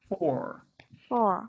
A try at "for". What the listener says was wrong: Yes, but it's got a bit of a schwa going on, so it can be shortened.